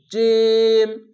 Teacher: জিম উচ্চারণটি ওপর তালুর সঙ্গে মিডিলে লেগে হবে